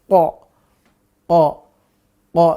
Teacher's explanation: Q lebih dalam ya nanti kalau Q itu pangkal lidah dengan langit-langit dekat dengan tenggorokan